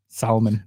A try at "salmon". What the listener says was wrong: People say it is salmon. There's an L there. You got to pronounce it.